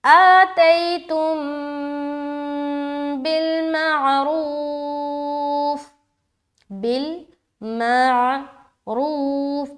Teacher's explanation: جب بھی میم ساکن کے بعد با آ جائے تو اخفاء شفوی کا قاعدہ ہو جاتا ہے، لہٰذا وہاں غنہ اور اخفاء دونوں کے ساتھ پڑھیں گے، غنہ زیادہ ہوگا، اخفاء کی جھلک تھوڑی سی معلوم ہوگی